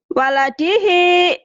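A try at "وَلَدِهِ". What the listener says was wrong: Salah. Waladihi. Waladihi. Jangan waladehe. Waladehe. Jangan. Kalau waladehe ada tasdidnya. Datar aja. Waladihi.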